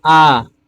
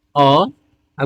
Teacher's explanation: आपको खुद महसूस होगा कि आ को बोलने में ज्यादा समय लग रहा है और अ को बोलने में कम समय लगता है